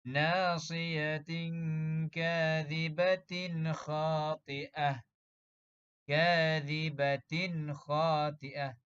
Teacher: Bacaan untuk izhar halqi tidak dengung. Dibaca jelas dan nyata sahaja.